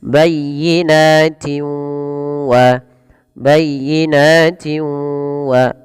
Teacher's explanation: cara membacanya memasukkan suara tanwinnya kepada huruf waw. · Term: idgham bi gunnah